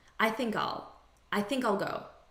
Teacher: in natural spoken english the unstressed pronunciation is all